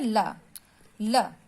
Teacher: जिह्वा का अग्र भाग मसूड़ों को छूता है, किंतु बगल का भाग खुला हुआ रहता है